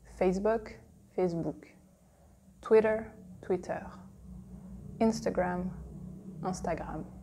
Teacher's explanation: you see in English the intonation is at the beginning